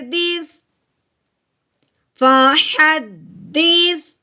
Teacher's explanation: اب ہم نے کیا کرنا ہے، دال کو سا کے ساتھ ملانا ہے، ٹھیک ہے۔ سا کی آواز نکالتے ہوئے سیٹی کی آواز بالکل نہیں نکالنی۔